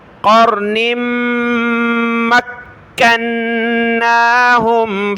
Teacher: میم پر غنہ ہوگا، کاف کو سخت کریں گے، نون کو بھی سخت کرنا ہے غنے کے ساتھ